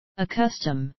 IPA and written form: ə'kʌstəm (accustom)